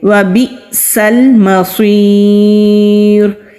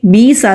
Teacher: حمزہ ساکن ہے تو یہاں پر اس کو ہم جھٹکے کے ساتھ، سختی کے ساتھ پڑھیں گے، بی سال نہیں پڑھیں گے بلکہ جھٹکا دیں گے۔